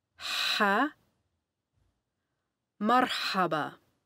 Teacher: pronounced like the letter H, but further back in the throat. Imagine taking a pair of glasses or a mirror and trying to fog the lens with your breath.